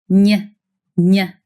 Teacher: you get that quick Y sound at the end as soon as your tongue moves on to pronounce the next vowel. · the middle of your tongue doesn't just move towards the roof of your mouth, y, it actually touches it, stopping the airflow and forcing the air to come out of your nose. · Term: nasal ny